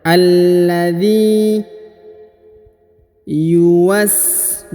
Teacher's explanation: huruf zi dipanjangkan 2 harokat karena di depannya terdapat ya sukun